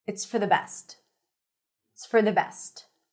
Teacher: Best is fully pronounced. It's for the reduced and connected.